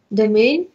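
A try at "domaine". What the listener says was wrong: домены, еще больше «э» домен.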